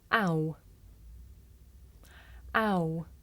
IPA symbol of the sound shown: aʊ